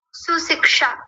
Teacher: पहले दंत्य सकार फिर तालव्य शकार और मूर्धन्य शकार यहां आधा होता है।